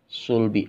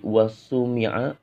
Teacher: Sod ini siul. Sin itu tidak siul ya.